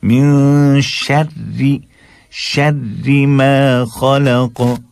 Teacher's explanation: من شر بالکل باریک کیجیے، راہ کو ڈبل راہ ہے اور زیر ہے تو ایک دم باریک